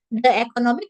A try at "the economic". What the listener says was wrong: Terbalik. Yang di, yang A, I, U, E, O.